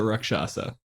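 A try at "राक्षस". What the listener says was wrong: So, one correction. It's not Rakshasa. So the stress is not on the second A, it's on the first A. So it's Rakshasa.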